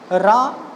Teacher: रा का उच्चारण करते समय हमारी जीभ के अग्रभाग में कंपन होता है, इसलिए इसे लुंठित या प्रकंपित व्यंजन कहा जाता है।